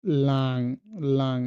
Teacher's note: এনজি যেটা হলো আপনার একটু নাক থেকে আসে, যেটা একটু লং, যেমন লাং, লাং, এটা অটোমেটিক আপনি দেখবেন যে সাউন্ডটা আপনার নাক থেকে চলে আসতেছে, ইংলিশে যেটা আমরা বলি লং, আর এখানে হলো লাং, লাং, তার মানে এটা নাক থেকে সাউন্ডটা চলে আসতেছে লাং।